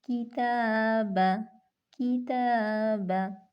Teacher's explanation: تا باریک حرف ہے تو الف کو ہم باریک پڑھیں گے، کتابا، کتابا۔